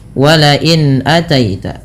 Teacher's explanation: Alhalqi atau halqi berasal dari kata halq artinya tenggorokan yang di mana huruf hamzah merupakan huruf yang keluar dari tenggorokan. Sehingga ketika ada nun sukun bertemu dengan hamzah maka jelaskan bunyi nunnya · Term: izhar halqi